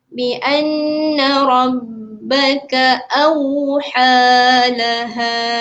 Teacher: apabila nun dan mim yang bertanda W tu, bentuk W tu, maka tuan-tuan dan puan-puan perlu dengungkan dia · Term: wajibul gunnah